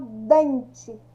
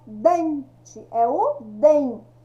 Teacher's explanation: Quando eu falo dente, qual que é a sílaba mais forte? Ó, dente, é o DEM.